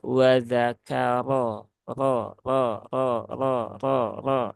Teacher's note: ro yang berbaris fathah dia harus diucapkan dengan tebal ya